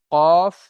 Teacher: জিভের গড়া হতে একটু আগে বাড়িয়ে সেই অংশটি উপরের তালুর সাথে লাগিয়ে উচ্চারণ হয় কাফ · জিভের গড়া উপরের তালুর সাথে লাগিয়ে উচ্চারণ হয় কফ